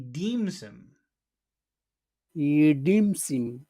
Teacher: deem is very big and he and him become very very very small